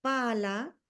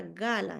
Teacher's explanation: Que dentro de sus rasgos tenemos que es oclusivo, es bilabial, es sordo, y la G, que es fricativo, velar y sonoro. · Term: oposición máxima